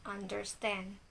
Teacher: two unstressed syllables followed by a stress syllables